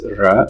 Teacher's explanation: When in English you want to tell someone to pronounce a trill R, you can say you roll your R, because you roll, it looks like you're rolling tongue. But what you're doing is you're continuously tapping, rapidly tapping active articulator, which in this case is your tongue, against the passive articulator, which is in this case is the alveolar ridge.